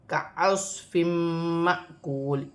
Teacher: کَعَصْفٍ مَّأْکُولٍ، یہاں 2 زیر کی تنوین میں غنہ کیا جائے گا، 2 زیر کی تنوین کے بعد میم مشدد ہے، ادغام مال غنہ ہوگا۔ الف پر جزم کی حرکت ہے تو الف حمزہ بھی پڑھا جائے گا اور جھٹکے کے ساتھ پڑھا جائے گا، جیسے معقول۔